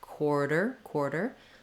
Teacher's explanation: It has quar in the first syllable. Then my T sounds more like a D. It's a flap